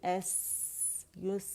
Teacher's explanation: اس میں رخاوہ بھی ہوگا, یعنی آواز چلے گی ایس یس, آواز چلنے سے کہتے ہیں.